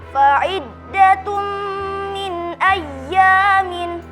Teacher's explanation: fa'iddatum min ayyamin, terdapat hukum idgham bi gunnah karena ada domatain bertemu dengan huruf mim dibaca dengung